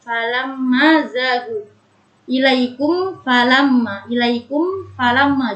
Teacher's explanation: Apabila ada mim sukun bertemu dengan huruf fa, yaitu disebut dengan idhar syafawi, yaitu dibaca dengan tidak mendengung